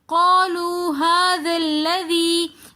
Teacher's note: لذی میں دوبارہ یا مدہ آنے کی وجہ سے ہم لذی تھوڑا سا کھینچ کر پڑھ رہے ہیں